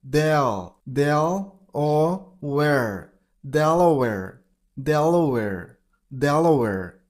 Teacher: You gotta stress on the very first syllable.